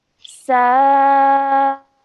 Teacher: So seen with a fatha and then an alif mad and a madul kabir. So we're going to stretch for 4 counts at least.